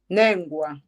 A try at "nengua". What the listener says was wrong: Temos vogal longa, tenta ainda mais. Tenta de novo.